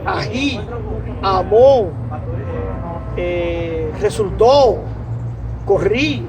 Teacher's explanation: así las palabras si se es tan acentuada con el toro la fuerza en la última sílaba sabemos que se llaman agudas